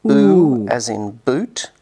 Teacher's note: as in boot which is back high rounded and tense